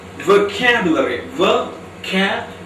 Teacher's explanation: The stress is on k sound, the second syllable. So we have to pronounce the word as vocabulary.